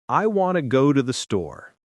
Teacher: Notice how we stress want, go, and store. The small words to, and the are weak.